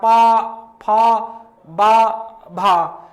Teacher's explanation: पा तो ऊपर और नीचे का होंठ टच होता है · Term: ओष्ठ